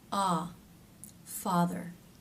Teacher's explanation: This vowel sound has more jaw drop, ah, than any other vowel in American English, so make sure you're really getting a nice drop there. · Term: ah as in father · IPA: /ɑ/